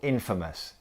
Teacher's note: a note on pronunciation of Infamous the stress is on the first syllable